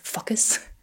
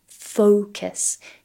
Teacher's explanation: try to really think about having a round O Focus try to elongate that first syllable o so it will